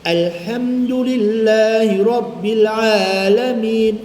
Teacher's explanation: Tetap ainnya istifal. Alifnya yang dibaca tinggi, tapi tetap baca istifal.